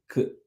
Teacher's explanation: non-voiced, non-aspirated. Means there is no air involved in this. K, soft. I mean, very, very simple.